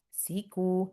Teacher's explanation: Si short, ku long. One count, two counts.